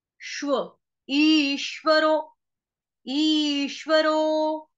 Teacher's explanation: ई, ईख वाली बड़ी ई की मात्रा है ई। ई के ऊपर आघात किसका आएगा? आधे श का, क्योंकि आगे संयुक्त वर्ण आ रहा है श्व।